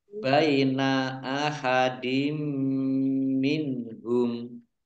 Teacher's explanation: Jadi langsung masuk ke huruf mim, ditandai mimnya ada tasdidnya. Mim tasdid dibaca gunnah atau mendengung, ditahan 2 harokat. · Kasrah tanwin bertemu dengan huruf mim, idgham bi gunnah. Idgham masuk bi dengan gunnah mendengung, masuk dengan mendengung.